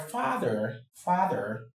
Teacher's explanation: the e r at the end is a schwa sound